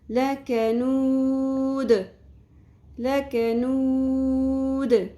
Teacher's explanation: اب یہاں پہ دال ساکن ہوگا تو قلقلہ بھی ہوگا. دال ساکن پہ قلقلہ ہوگا